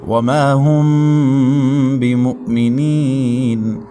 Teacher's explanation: میم ساکن کے بعد با آ رہا ہے تو ادھر اخفا ہوگا